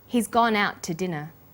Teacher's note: we stress he's gone out and dinner the two is unstressed when we link out which is stressed and to which is unstressed the final T sound in out is held slightly longer